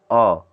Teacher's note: और जीभ का मध्य भाग ही काम करता है। जीभ का केवल मध्य भाग काम करता है। और इसका जो मध्य स्वर जो कहलाता है वह अ है।